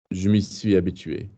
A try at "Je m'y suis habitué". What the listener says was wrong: Don't bang the bloody auxiliary. I've told you guys that already today, haven't I?